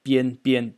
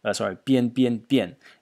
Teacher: This was a semi-voiced B sound